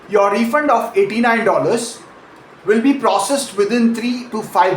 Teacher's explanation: breaking it into three natural chunks with a breath and a tiny pause between each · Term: chunking